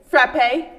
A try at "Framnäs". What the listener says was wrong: No. Fram. Not p. No. Framnäs.